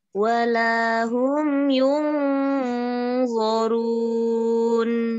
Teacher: Yung warun langsung siap-siap lidahnya pangkalnya naik langit-langit. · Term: tafhim tebal